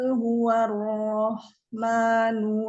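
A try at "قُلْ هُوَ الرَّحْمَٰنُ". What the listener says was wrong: Qul ro-nya mau lebih terasa lagi tasydidnya. Huwarrahmanu. Tahan dulu. Huwarrahmanu.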